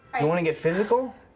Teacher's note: Listen to how he says physical without L vocalization in this clip.